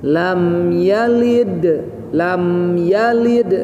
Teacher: lam sama mim sukun, tidak boleh ada jeda sehingga mantul